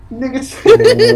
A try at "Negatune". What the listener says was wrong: Negatune? Yeah, Nega, not Nigga.